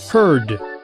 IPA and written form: hɜrd (heard)